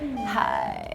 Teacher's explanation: they call it vocal fry like at the end where it's like hi